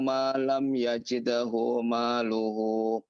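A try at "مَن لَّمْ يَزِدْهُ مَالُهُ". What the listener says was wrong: Man lam yazid. Man lam yazid. Dimasukkan ke lam. Enggak dipanjangkan mimnya. Mimnya itu di situ adalah man. Man lam. man lam.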